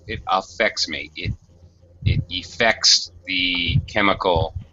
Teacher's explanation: they're both second syllable stress